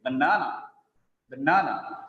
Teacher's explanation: The second syllable is stressed there.